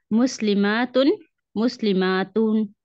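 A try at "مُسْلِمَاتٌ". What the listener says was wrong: हाँ, जो पहली दफा पढ़े ना उसे पढ़े मुस्लिमातुन, उसे लंबा नहीं करें। मुस्लिमातुन, मुस्लिमातुन।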